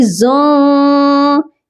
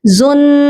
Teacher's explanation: یہاں پر بھی ہم اپنی آواز کو ناک میں چھپائیں گے. زن، پورا غنہ نہیں کریں گے، نون کی آواز کو پراپر طور پر نہیں پڑھیں گے بلکہ چھپا کر پڑھیں گے